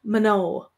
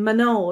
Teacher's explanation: There is what's called a little auxiliary vowel between the M and the N